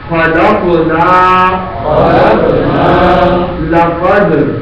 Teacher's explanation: یہاں قاف پر جزم ہے، سائلنٹ ہے تو ساکن قلقلہ کے ساتھ پڑھا جائے گا. خلقنا، لقد، یہاں دال سائلنٹ ہے.